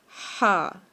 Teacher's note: ہمارا جو حلق کا درمیان والا حصہ ہے، یعنی کہ ہمارے وسطائے حلق سے ہم اس کو ادا کریں گے، جو کہ ہے لفظ ہا، ٹھیک ہے۔